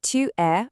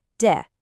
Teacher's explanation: The oo sound just gets swallowed up and the words smashed together. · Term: vowel getting dropped